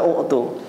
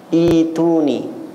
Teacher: para ulama qiraah membacanya tidak dibaca u'tu tapi ituni. Hamzahnya dihilangkan sebab berat.